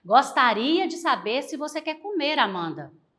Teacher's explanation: Já na frase interrogativa indireta, seria parecida aí com uma entonação de uma afirmativa, porém, pessoal, indicando um questionamento